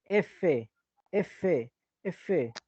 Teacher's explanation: dientes superiores se pelean a tu labio inferior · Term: labio dental